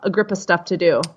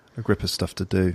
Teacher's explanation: in American pronunciation we really reduce the word of to sound more like a